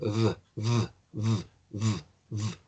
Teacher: el sonido V es el labiecito inferior contra los dientes superiores. Y hay una vibración.